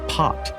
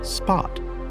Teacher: Consider how the P has a stronger puff of air when saying pot compared to the softer P in spot